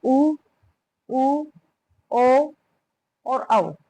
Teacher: वृत्त के अनुसार हमारे होठ बन जाते हैं। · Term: वृत्ताकार